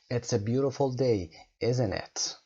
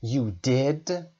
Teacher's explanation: سوالاتمون رو falling intonation میکنیم، یعنی صداش رو میاریم پایین، لحن صدامون میاد پایین.